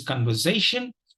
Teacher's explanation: today is conversation and there are two uh stressed uh syllables the third syllable takes the primary accent and the first syllable takes a secondary accent